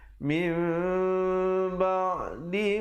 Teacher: Hukum iqlab, bacalah 2 harakat dengan mim yang nipis.